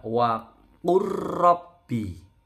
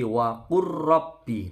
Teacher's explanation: Jadi lamnya yang sukun melebur ke ro, bukan waqul rabbi, tapi waqur rabbi, tidak putus ya, waqur rabbi. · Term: lam sukun ketemu ro